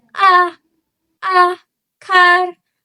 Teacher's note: Lalu ada a pada car lidah rendah di belakang.